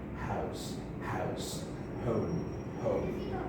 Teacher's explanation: Glottal, fricative, approximate, voiceless sound. Because the vocal cords do not vibrate. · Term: glottal sound